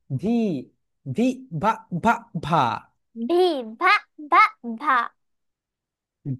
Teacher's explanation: ভি যখন উচ্চারণ করবে উপরের যেই দাঁত রয়েছে নিচের নিচের ঠোঁটের সঙ্গে টাচ করবে।